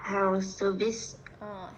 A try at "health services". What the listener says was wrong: Health services. Nhớ âm cuối cho cô nha. Health services.